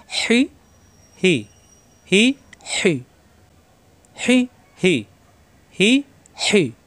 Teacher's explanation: হাজের হি, কণ্ঠনালীতে চাপ সৃষ্টি হবে